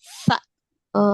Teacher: Sa itu berarti ujung lidah bertemu dengan ujung gigi seri atas